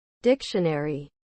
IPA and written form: ˈdɪkʃəˌnɛri (Dictionary)